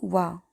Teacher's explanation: तो वो है डी, यानी कि वा। वा दंत्योष्ठ यानी कि दांत और ओष्ठ से बोला जाता है।